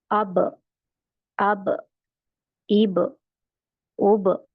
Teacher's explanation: टक्कर खाके मखारिज का अपनी जगह लगना और हट जाना जैसे बा में दोनों होठों को मिलाए और जुदा हो जाता है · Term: कल कला